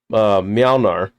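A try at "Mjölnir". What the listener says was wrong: No, you're saying an L at the beginning. There's no L at the beginning. Mjolnir.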